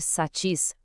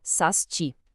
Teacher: Nesse caso, o que acontece é uma troca do fonema S. O som que deveria ser satis acaba sendo pronunciado como sasti. É como se o som do S se antecipasse, mudando a estrutura da sílaba.